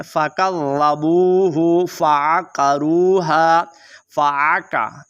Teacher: आइन को आपने अदा करना है, ये हलक के दरमियान वाले हिस्से से अदा होती है।